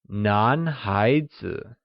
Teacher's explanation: where nan, spoken in the second tone, means male, and hai zi, also spoken in the second tone, translates as child.